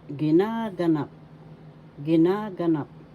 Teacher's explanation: Second syllable has the accent, so you pronounce this as ginaganap.